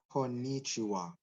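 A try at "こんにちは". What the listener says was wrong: Okay, good.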